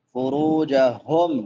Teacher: حافظین فروجہم، فرو را کے بعد واو مدہ ہے، واو ساکن ما قبل ضمہ ہے، ایک الف کے برابر لمبا کریں گے۔ فروجہم، ہا بڑی ہا ہے، اقصا حلق سے، حلق کے آخری حصے سے۔ میم ساکن ہے تو میم ساکن پہ اظہار ہوگا، فروجہم۔